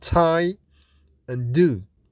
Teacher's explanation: Identification of the consonants t and d. Those two alveolar sounds are made with a total closure. We are still talking about plosives, in which we stop the air completely using the tongue blade against the alveolar ridge. · Soft palate is raised to stop air from going to the nasal cavity. So this is an oral sound, not a nasal sound. T is unvoiced or voiceless and fortis, that is produced without vibration in the vocal cords with more force.